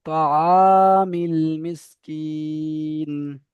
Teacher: তহামিল মিসকিন। দেখেন এখানে তো হা বলছেন, হা হবে না, আইন এটা